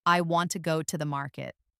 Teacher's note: For example, in the sentence, I want to go to the market, the stressed words are want, go and market. The smaller words like I, to, and the are less stressed. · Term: sentence stress